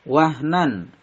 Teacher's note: Wahnan, nan ini idhar karena ada tanwin bertemu huruf ain, dibaca jelas tanpa mendengung